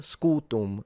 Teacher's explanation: The U is long, the M fully nasalized, a bit like you do in Portuguese, rather than Italian